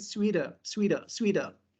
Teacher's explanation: Because T between two vowels, so we pronounce T like da, but it not appear in transcription.